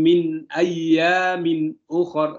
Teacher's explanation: min harus jelas di situ, terang. Tidak boleh disamarkan, tidak boleh berdengung. Nah, itu ya hukum izhar.